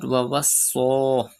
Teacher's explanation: Pronounce Sod with whistle sound because Sod is from Safiriya letters, and stretch khara zabar on it.